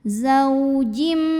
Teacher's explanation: tanwin kasrahnya masuk lebur ke mim disertai bunyi dengung. Jadi ini zaujim masuk ke mim dan bunyi m-nya tahan. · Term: idgham bi gunnah